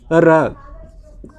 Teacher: क्यों इसको लुंठित बोला जाता है, जब हम मुख से र का उच्चारण करते हैं तो देखेंगे जीभ हमारी क्या होती है, लगता है कि लिपट रही है, ठीक है, आपस में लिपट रही है, इसलिए इसको जो है कि लुंठित बोला जाता है।